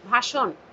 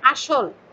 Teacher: মধ্য অ এর আগে আ থাকলে সেই ও রূপে উচ্চারিত হয়।